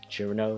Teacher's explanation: the original Japanese pronunciation is chi-ru-no, so more of a cheer sound than a chur sound.